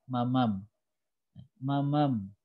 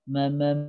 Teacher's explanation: kalau m tidak ada suara mengalir kalau mim ketika sukun itu ada suara mengalir